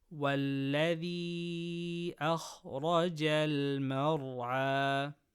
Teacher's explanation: Kha from khussa daghatin qidh, full mouth. · Ra with fatha, full mouth.